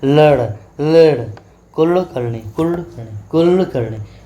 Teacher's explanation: इसका उच्चारण ल और ड की ध्वनि के बीच में होता है।